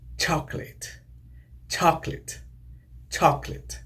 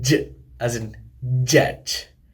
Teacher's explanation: They begin with a complete blockage of airflow, like stops, but release into a fricative. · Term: Affricates